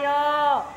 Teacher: तो आपका जीव जो है वह तालू की तरफ ऊपर जाएगा